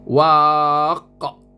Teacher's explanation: Waqa bukan waq tak bukan waq tak tak cukup qalqalah kena waqa dan ini ada alif tengah dia jadi panjang sikit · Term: Qalqala kubra